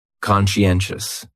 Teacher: That second syllable is what really confuses people because that sigh almost sounds like you're saying she.